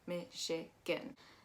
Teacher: we're actually going to be pronouncing that ch as an sh · that G-A-N is actually more of an I sound.